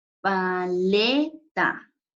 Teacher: En este caso, la sílaba tónica sería le